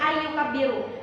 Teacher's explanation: Jika kita tidak menggunakan huruf idgham bi gunnah, tidak menggunakan hukum idgham bi gunnah, kata ini akan terbaca menjadi anyukabbiru. Tapi karena kita menggunakan hukum idgham bi gunnah, huruf nunnya hilang, masuk ke huruf ya menjadi ayyukabbiru